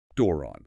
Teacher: That first syllable, do, with the long omega, gets the rise and fall. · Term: circumflex